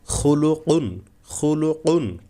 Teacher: খুলু কুন, কফ কিন্তু গলায় যেতে হবে। খুলুকুন বললে কাফ হয়ে যাবে।